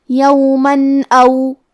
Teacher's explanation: اور کیونکہ تنوین کی اصلیت نون ساکن ہے تو ہم یہاں تنوین ظاہر کریں گے اور اسے نون ساکن پڑھیں گے اور بغیر غنہ سے یہ حکم کو ادا کریں گے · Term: اظہار